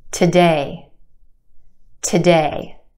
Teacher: our second syllable has the stress or emphasised vowel sound · Again, we've got two syllables in this word. Our second syllable has the stressed or emphasized vowel sound, A, A. We stretch that sound and put it in the spotlight.